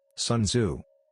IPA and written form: ˈsuːnˈdzuː (Sun Tzu)